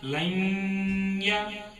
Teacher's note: نون کی آواز کو ہمیں ناک میں گھمائیں گے